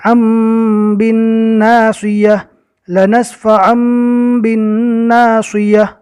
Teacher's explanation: نون ساکن اور تنوین کو میم سے بدل کر پڑھیں گے، اس لیے کہ تنوین کے بعد با آ گیا۔ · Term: اقلاب